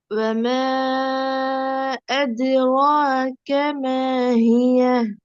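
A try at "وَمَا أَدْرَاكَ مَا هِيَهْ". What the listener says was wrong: மீம் என்ன கொஞ்சம் நீட்டி எடுத்து வரும்.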